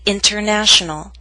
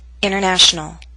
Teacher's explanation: in fast informal speech we sometimes omit the T in the prefix inter as in international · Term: omission of the consonant sound T